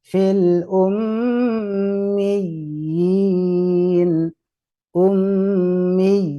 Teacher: tasdidnya ditegas dan juga panjangnya